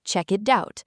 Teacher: The k sound at the end of check slides over to the vowel i in it, making it sound like check it. Then the t sound at the end of it slides over to the vowel o in out. In American and natural casual English, that t even softens into a quick d sound.